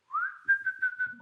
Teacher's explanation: end because I'm going to show you what to do basically the letter U is pronounced in this position with very very round lips